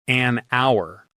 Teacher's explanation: an hour, because that H is silent, so it starts with a vowel sound